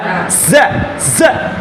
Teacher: এরপরে আছে কি যা জবর যা, যা যা, এর শীষ দিয়ে পড়তে হয় জিব্বার আগা থেকে